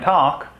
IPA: ʈɑk